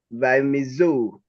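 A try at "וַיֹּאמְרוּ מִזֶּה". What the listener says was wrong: Yeah, I can see where you get that. It looks a little confusing here, but the vowel point is segol, mi, ze.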